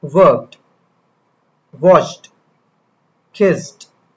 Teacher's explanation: After most voiceless sounds like P, K, S, it sounds like a quick T